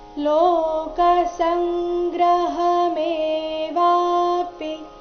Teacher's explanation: ಮೇ ಮತ್ತೆ ವ ದೀರ್ಘ ಪಿ ರಸ್ವ ಬರಬೇಕು